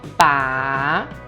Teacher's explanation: a pronúncia dele tá desce e sobe